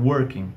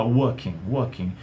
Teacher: no britânico a gente joga esse R fora e fala walking, walking.